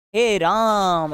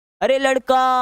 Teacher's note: अरे लड़का ऐसे तीन गुना समय लेकर बोल रहे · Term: लुप्त स्वर